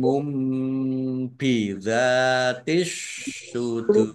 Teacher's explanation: dhammah tanwin bertemu dengan huruf ba, bacaan iqlab, dibaca membalik, tanwinnya dibaca mim dulu. Ditandai ada mim kecil berdiri.